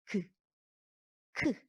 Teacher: 똑같이 그나 크나 혓뿌리가 목구멍을 한번 막았다가 떨어져요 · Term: 같은 위치